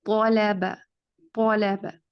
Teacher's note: طو یہاں پر ہے, لام کو پر نہیں کریں گے